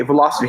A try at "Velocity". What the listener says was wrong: Do you see a T in there anywhere?